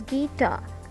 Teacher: So tar is louder than gi, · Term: iambic meter